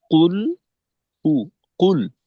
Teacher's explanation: কুল এই শব্দ উচ্চারণে কিন্তু আমাদের ঠোটের দুইটা অবস্থা থাকবে প্রথমে কফের পেশের জন্য গোল লামের জজমের জন্য খোলা। এখন যদি আমরা পুরা উচ্চারণটাকে ঠোট গোল রেখে করি তাহলে কিন্তু